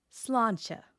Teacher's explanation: The Irish toast, you've probably heard it, possibly mispronounced it. The slán part has a fada, which lengthens that vowel. The end has a slender consonant cluster.